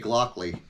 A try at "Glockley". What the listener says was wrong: There's no L before the O.